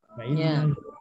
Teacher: Ini juga ditahan dulu. Penahan huruf nun disertai dengungan sekurang-kurangnya 2 harokat. Dengan kadar 2 harokat. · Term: guna